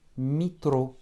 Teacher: notre yé, qui est composé du son I et E, yé, va se réduire à un petit I. Mitro. Et pas mietro.